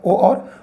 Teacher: कंठोष्ठ यानी जिन स्वरों का उच्चारण हम कंठ से भी करें और ओष्ठ से भी